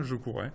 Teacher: Vous pouvez avoir deux R qui apparaissent et qui sont réalisés sous la forme d'un seul. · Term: consonne simple